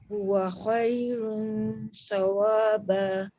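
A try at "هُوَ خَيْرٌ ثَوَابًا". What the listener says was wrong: Sa jangan tebalkan. Huwa khairun. Ni pun ra, lepas tu tanwin depan kan. Dhammah dia muncung. Tapi dekat sa jangan muncung.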